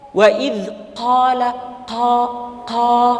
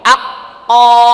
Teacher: Q itu makhrajnya dari aqs lisan pangkali tahu pangkal lidah ya lidah bagian belakang nempel dengan langit-langit dan dia sifatnya kuat jangan bocor